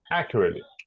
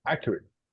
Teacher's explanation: It's in the beginning, the stress is in the beginning.